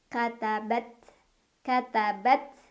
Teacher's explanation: ta ini punya sifat syiddah, suaranya tertahan dulu ya. Baru setelah itu ada hamesnya, jadi hamesnya atau anginnya keluar belakangan ya.